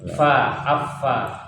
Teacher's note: Kemudian fa. Fa makhrajnya di ujung gigi seri bagian atas menempel pada bibir bawah bagian dalam.